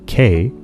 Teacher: the sound K is a velar sound. It involves the back of your mouth. That's its place of articulation, and the stopping of air, which makes it a plosive.